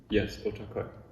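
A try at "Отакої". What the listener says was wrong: A bit softer ending, yi.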